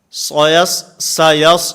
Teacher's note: सीन फिर सौद, सीन में आवाज़ को बारीक और सौद के अंदर आवाज़ को पुर करना है।